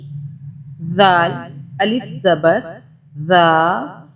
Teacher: زبان کو اوپر والے دانتوں کے باہر ہلکا سا نکال کے اگر آپ اس کو ادا کرنے کی کوشش کریں تو یہ ادا ہو جائے گا۔ سافٹلی، سیٹی کی آواز نہیں آنی چاہیے۔